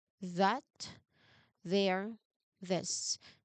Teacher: These words use the voiced th sound. Remember to add that vocal vibration to make the buzz in um distinct.